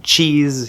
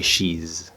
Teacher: you really want to make sure that you close it off in the T or D position first, and then flow open into the SH or the ZH.